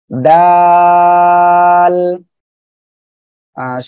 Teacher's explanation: জিব্বার আগা সামনের উপরের এই যে দুই দাঁতের আগার সঙ্গে লাগিয়ে উচ্চারণ হবে, দাল। এটা হলো নরম করে উচ্চারণ হবে। · জিব্বার আগা সামনের উপরে দুই দাঁতের গোড়ার সঙ্গে লাগিয়ে উচ্চারণ হবে